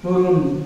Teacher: এই দন্তন্য ন এর উচ্চারণ এবং মূর্ধন্য ন এর উচ্চারণ কিন্তু একই